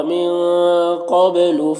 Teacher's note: نون ساکن کے بعد قاف ہے حروف اخفا میں سے، تو نون میں اخفا ہوگا، نون کی آواز کو ناک میں چھپا کر پڑھیں گے